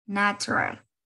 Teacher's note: la boca va a tener la posición como si ustedes fuesen a pronunciar la vocal E, pero en lugar de salir el sonido de E, sale el sonido de una A